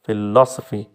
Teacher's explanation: तो फिलॉसफी 4 है, सॉरी 4 हैं, तो इसमें जो सेकंड है लो वाला वो स्ट्रेस्ड है